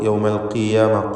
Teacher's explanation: അൽ ഖിയാമ എന്ന് പറയുമ്പോൾ ഖാഫിന് കസ്റ, അതുകൊണ്ട് കുറഞ്ഞ തഫ്ഖീമാണ് നൽകുക